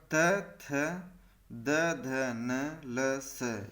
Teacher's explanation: त थ द ध न ल स ये दंत है, दंत बोले जाते हैं